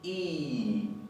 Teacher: es nuestra I, pero no relajada, sino bien enfática, como en la palabra limón, con una amplia sonrisa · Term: La I con acento